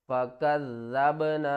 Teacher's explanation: काफ को ज़ाल के साथ मिलाएंगे, ज़ाल के ऊपर सख्ती करेंगे